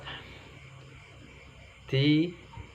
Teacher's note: Naffatha, hurufnya tha, ujung lidah menyentuh 2 gigi seri atas.